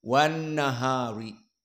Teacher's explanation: Alifnya hilang, tidak dibaca. Lamnya pun idgham kepada nun